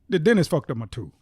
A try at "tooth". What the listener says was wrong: T-O-O-F. It's F.